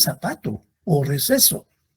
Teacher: cuenta que usamos mucho y las características del deseo es que nosotros no distinguimos los sonidos de la c la z y la s para nosotros suenan igual